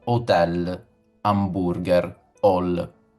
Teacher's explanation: Noi italiani in generale, non aspiriamo l'H, perché non è un suono nostro, cioè non è un suono proprio presente nella nostra lingua. · la H nelle parole di origine straniera, quindi hotel, hamburger, hall, quindi tutte queste parole in realtà vengono lette con una H muta